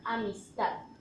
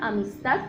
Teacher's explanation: En el caso del prosódico, entonces es aquel en el que no se marca tilde, como por ejemplo en la palabra amistad. El tono más fuerte de la voz, cuando pronunciamos esta palabra, amistad, lo hacemos en la última sílaba, ta. Es decir, que la palabra tiene acento, pero es prosódico porque no cumple con las reglas de las palabras agudas.